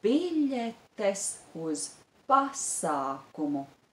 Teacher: The stress is on the syllable bi, biļetes, and on the syllable pa, pasākumu.